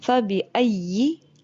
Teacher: یا کا زبان کا درمیانی حصہ اور اوپر کا تالو، زبان کا مڈ جو ہے وہ آپ کی اوپر لگنی چاہیے. فَبِأَيِّ، ای، ٹھیک ہے، لپس پھیل جاتے ہیں.